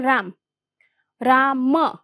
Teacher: એવી જ રીતે બીજું ઉદાહરણ છે રામ રામ મ અ એ અંતે જે સ્વર આવે છે એ સ્વર અ નો લોપ એટલે આપણે રામ એવું બોલીએ છીએ